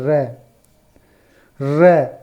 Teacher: र के उच्चारण में जिह्वा को कंपन करना पड़ता है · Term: प्रकंपित व्यंजन